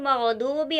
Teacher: मग़दूबी का गैन और द्वाद दोनों हमेशा मोटे पढ़े जाने वाले हुर्फों में से है। मग़दूबी गैन और द्वाद यहाँ पर पुर है जो हमेशा पुर पढ़े जाने वाले हुर्फों में से है।